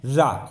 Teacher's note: जीवा मुख के मध्य तेजी से लड़खड़ाने लगे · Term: लुंठित व्यंजन